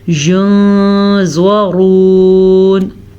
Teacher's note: زوا کو پر پڑھیں گے، زوا حروف مستعلیہ میں سے بھی ہے۔ را کو پر پڑھیں گے، را کے اوپر پیش کی وجہ سے۔ پر کا مطلب ہوتا ہے موٹا پڑھنا۔